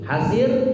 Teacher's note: rohnya di situ sebelumnya adalah kasroh, maka rohnya tipis. Hasir, tidak perlu mencucu.